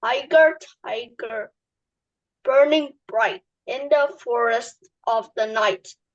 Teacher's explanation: this is an incomplete trochaic meter because it is missing part, the unstressed part of the trochaic meter